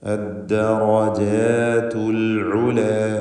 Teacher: ഈ പദത്തിൽ റായിന് മാത്രം തഫ്ഖീം വരുന്നു, മറ്റക്ഷരങ്ങൾക്കൊന്നും തഫ്ഖീം വരുന്നില്ല, എല്ലാറ്റിനും തർക്കീഖാണ് എന്നതും പ്രത്യേകം ശ്രദ്ധിക്കുക.